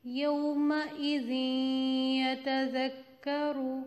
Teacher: تنوین آ رہی تھی, اس کے بعد یا آ گیا تو ہم نے یہاں پہ ادغام کیا غنّے کے ساتھ